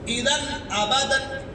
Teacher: تنوین کے بعد حمزہ آ گیا ہے، اظہار ہوگا، چھپا نہیں سکتے، اذن نہیں کر سکتے، اذن ابدن۔